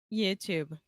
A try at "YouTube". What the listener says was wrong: Excellent. Cool.